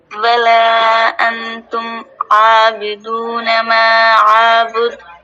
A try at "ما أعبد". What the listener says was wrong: دال کی آواز منہ کے اندر بند نہ رہ جائے، سنائی دے باہر تک. آ کو نہ کھینچیں، اعبد.